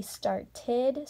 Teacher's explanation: If I had the word start and then I added ed, it'd be started, so it sounds like id